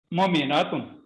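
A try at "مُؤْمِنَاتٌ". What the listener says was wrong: मोमिनातुन। सिर्फ एक आपने हरकत पढ़नी, हरकत खींचनी नहीं है।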